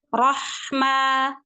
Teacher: huruf ha itu baik suara maupun nafas dia mengalir maka alirkan Rahma Ma Ma di situ ma dua harakat saja jangan Kepanjangan